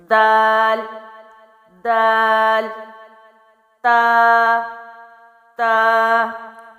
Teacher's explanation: دال باریک پڑھا جائے گا، زبان پیچھے سے سیدھی رہے گی۔